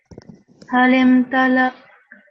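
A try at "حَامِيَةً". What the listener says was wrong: Just try to get a bit of the ta sound in there a bit more. Halim tala'at.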